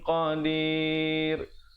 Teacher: kerana qafnya sifat isti'la dibacakan dengan tebal